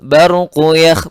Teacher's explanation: Baru kuyakh, baru ra-nya tebal karena di sebelum ra sukun ada fathah.